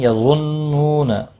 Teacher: نون مشدد پر غنہ ہوگا، نو واو مدہ بھی ہے، ایک الف کے برابر کھینچ کر پڑھیں گے